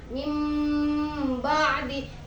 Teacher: Jadi suara nun mati masuk ke dalam huruf ba. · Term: Iklab